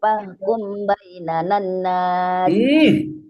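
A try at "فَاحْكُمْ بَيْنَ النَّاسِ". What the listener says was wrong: Fahkum ditahan don, mim ketemu ba ikhfa syafawi. Fahkum.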